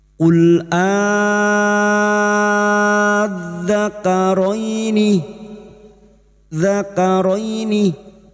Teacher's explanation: masuk pada huruf dzal yang bertasdid, hanya masuk tanpa ditahan lama-lama, tanpa mendengung